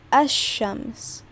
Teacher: you don't pronounce the lam in there